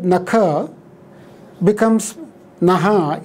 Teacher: the aspirated stops have become unaspirates, and the fricative part is retained